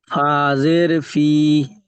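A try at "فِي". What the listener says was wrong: কি করে ফাজের ফি হয়? ফা ইয়া জের ফি, ইয়া সাকিন রয়েছে, ওটাকে জুড়ে পড়তে হবে না?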